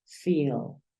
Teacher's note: le das un poquito más despacio a ese sonido I